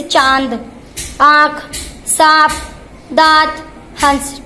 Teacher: अब हम पढ़ेंगे अनुनासिक। इसमें स्वरों का उच्चारण नाक और मुख दोनों से किया जाता है